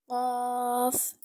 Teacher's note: हमारे पास लफ्ज़ है कफ कफ को कैसे अदा करते हैं जुबान की जड़ और तालू के नर्म हिस्सा से कफ को अदा किया जाता है